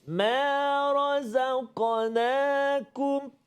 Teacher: Kena hati-hati sebut ra, zai, and then qaf yang sukun, ada qalqalah dekat situ. Kemudian nun dan kaf.